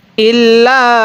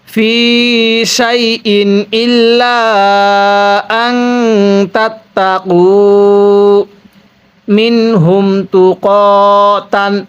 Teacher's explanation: ইল্লা এর মধ্যে তিন আলিফ টানতে হবে। এবার এই চিকন চিহ্নটার পরে লম্বা হামজা, এই জন্য তিন আলিফ টানতে হয়।